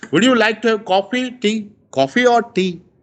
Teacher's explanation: when we speak coffee, we rise, but when we speak tea, we fall. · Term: rise and fall